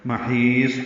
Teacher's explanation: ہا وسط حلق سے ادا کریں گے، لمبا کریں گے کیونکہ یا مدہ کے بعد صاد ساکن پہ وقف کر رہے ہیں.